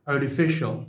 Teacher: In the word artificial, T is after the R sound, so it should be pronounced as a flap T, artificial, before syllabic L.